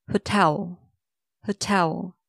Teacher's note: Do stress the second part, tell.